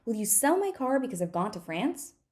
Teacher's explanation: I've reduced everything that is not sell, car, gone, and France, right? So I've reduced all the function words.